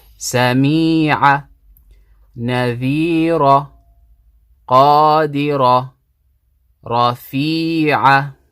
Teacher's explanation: So we're prolonging 2 harakat because the kasra has a ya sakina after it.